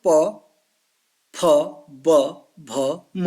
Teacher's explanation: होठों से इनका उच्चारण होता है। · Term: ओष्ठ